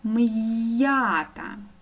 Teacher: чуємо чітко твердий приголосний м а далі я даю два звуки й а